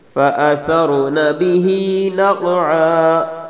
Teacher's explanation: فالمغیرات صبحا فأثرن به نقعا، را کو موٹا پڑھنا ہے، به ہا کو تھوڑا سا کھینچنا ہے، لمبا کرنا ہے، نقعا قاف کو موٹا پڑھنا ہے اور قلقلہ بھی کرنا ہے، عین پر وقف اس طرح کرنا ہے جس طرح اوپر ہا پہ وقف کیا تھا۔